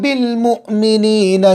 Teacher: حمزہ پر جزم ہے، جھٹکے کے ساتھ پڑھیں گے، بڑا شین صاف نکالیں گے، ہا صاف نکالیں گے۔